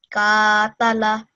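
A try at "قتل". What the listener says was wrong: Again, with this qaf, it should be round and thick. This qaf should be different than this kaf. This is a normal plain ka, ठीक है? Kaf.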